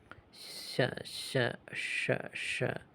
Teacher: Strictly speaking, cerebral, in which the tongue touches a high point in the roof of the mouth, but usually pronounced as sh, the same as the previous character sha. · So sha is touching a roof of the mouth like ship, but sha is like a retroflex. So the tongue is bent backward and touching the top of the mouth, and then making the same kind of sibilant sound, sound. So the tongue is just more bent, and touching the roof of the mouth.